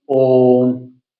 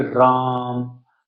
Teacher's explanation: प्लुत स्वर को इनमें तीन मात्रा का समय लगता है इसलिए हम इनको त्रिमात्री स्वर भी कहते हैं।